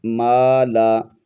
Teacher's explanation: یہاں پر الف کو کھینچیں گے آپ، ایک ایک الف کی مقداری